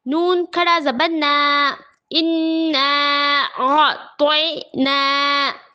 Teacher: نون پر کھڑا زبر ہے، برابر ہے حرف مدہ کے، تھوڑا کھینچ کر پڑھیں گے